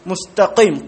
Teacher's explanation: മുസ്തഖീം ഖാഫ് ആകട്ടെ ഈ ഇസ്തിഅലാന്റെ സിഫത്തുള്ളതാണ്. നാവ് ഉയർത്തി പറയണം.